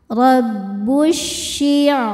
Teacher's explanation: huruf ro dibaca secara tafkhim karena harakatnya di atas fathah. Cara bacanya roho dibaca tebal.